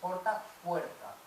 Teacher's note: porque la O breve de porta diptongó en hue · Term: diptongación